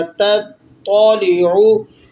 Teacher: تو کو ذرا موٹا کر کے اور منہ کو بھر کے ادا کیا جائے گا